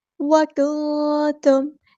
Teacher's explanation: باللہ وکنتم، کاف یہاں پہ باریک ادا کرنا ہے، نون یہ آواز یہاں پہ چھپا دینی ہے کیونکہ یہاں پہ اخفا ہو رہا ہے، نون ساکن کے بعد تا ہے۔